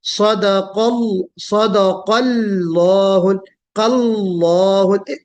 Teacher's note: پہلا لام ساکن آپ پڑھ رہی ہیں باریک، پھر اللہ کو موٹا